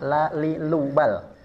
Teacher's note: Dari segi nafas, dia bersifat jahar, gampang. Ini tidak ada nafas yang keluar